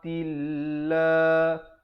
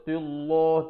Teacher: Makhrajnya di tepi lidah. Tilla, dibaca nipis lafzul jalalah. Jangan baca tillah tapi tilla, 2 harakat lafzul jalalah.